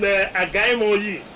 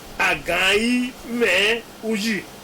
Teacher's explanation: You see, the base form in agaimoji, that is agaime uji, first undergoes the process of assimilation, where the u is reduced in height having been assimilated by the e, because e and o are of the same height. So the u of uji is brought down to the level of the e, and that is why you have the o in the surface form. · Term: vowel assimilation